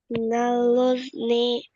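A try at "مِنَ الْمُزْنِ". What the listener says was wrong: Ada mimnya di situ.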